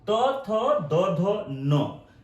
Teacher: ये जो होता है वो दांत से बोला जाता है, इसीलिए दंत्य कहते हैं